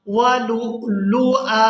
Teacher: حمزہ کو ساکن نہیں کرنا بلکہ حمزہ کے اوپر ایک زبر ادا کریں گے اور اس کو ایک الف مقدار کھینچ کر ادا کریں گے